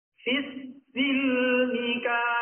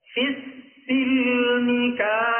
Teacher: Jadi bunyi kafnya dipanjangkan 3 alif terlebih dahulu, baru masuk ke fa tasydidnya. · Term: mad lazim musaqqal